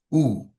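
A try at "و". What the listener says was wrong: But here you're saying ooh, ooh, like a hamza. Rather, you want it to be ow, ow.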